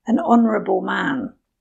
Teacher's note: with the last word, honourable, it starts with a vowel sound. The H is silent.